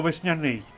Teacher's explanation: у слові весняний звук ш отримує м'якість від наступного м'якого приголосного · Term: пом'якшення приголосних